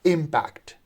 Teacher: the second syllable is not stressed. The first syllable is stressed, so we pronounce it as impact